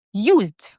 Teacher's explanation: Moved. Used z is also a voiced sound. There is a vibration here.